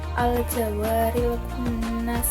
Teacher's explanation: Pada bacaan kunnas merupakan hukum tajwid gunnah musyaddadah karena ada nun bertajwid. Dibacanya dengan cara berdengung.